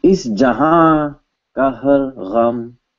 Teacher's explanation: We changed the na into a ChandraBindu, which made the ah sound in your nose. It made a nasal consonant.